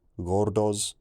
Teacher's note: The final S turns into a Z